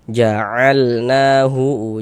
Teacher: Maka huruf yang memiliki harokat fathahnya dibaca panjang, sehingga ja dibaca panjang. Mad tabi'i panjang 2 harokat sesuai rumus 3 warna hitam.